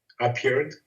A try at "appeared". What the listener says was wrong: Very good.